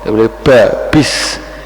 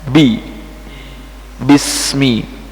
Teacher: Ba. Nah, ba tidak boleh terlalu banyak udara keluar